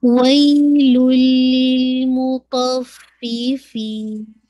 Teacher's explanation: और make sure कीजिएगा लाम का इदगाम मुकम्मल लाम के अंदर हो जाएगा, तनवीन का जो है मुकम्मल लाम में मर्ज हो जाएगी, वही लुन के बजाय वही लुल हो जाएगा, ठीक है। तो ये कामिल इदगाम हो जाएगा विदाउट वरना।